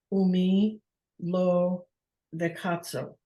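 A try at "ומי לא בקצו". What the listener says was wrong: why did you change the vowel? Vekitso. So who will live short life? Kitsor is short. And who, u is and, me, who. Lo, not vekitso. And who will, okay, who will live, actually, it means short.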